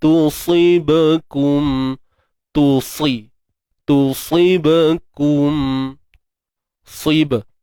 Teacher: Untuk ba yang bertanda sukun ni qalqalah sughra, lantunan kecil.